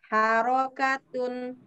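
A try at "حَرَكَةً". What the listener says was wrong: Jadi, coba Bu, yang harokat terakhir Ibu baca diulangi.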